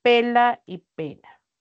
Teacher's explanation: Esa lateral es sonora y la otra N también es sonora. · la L es una alveolar por el punto de articulación y la N también. Entonces, por el punto de articulación, ambas son alveolares. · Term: sonoras